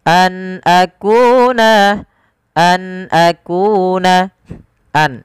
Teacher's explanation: Suara nunnya diperjelas karena dia ada bacaan berupa izhar halqi. Nun ketemu dengan hamzah dijelaskan suara nunnya an akuna, an akuna, tidak ada penahanan an akuna, tidak, tapi an akuna.